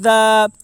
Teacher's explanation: الف مدہ کو ایک الف کے برابر کھینچ کر پڑھیں